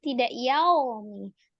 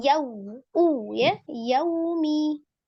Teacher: Fi yaumi, yaumi, ada lin, waw sukun sebelumnya fathah. Monyongkan kedua bibirnya ketika waw sukun, sempurnakan supaya tidak o ya, tidak yaumi, tapi yau ya, yaumi.